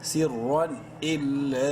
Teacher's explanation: لام کو 3 الف کے برابر لمبا کر سکتی ہیں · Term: مد